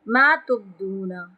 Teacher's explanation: ما تبدون با پہ قلقلہ کریں گے